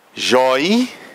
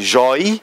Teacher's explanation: Se a gente observar, a gente vai ouvir um I nas duas sílabas.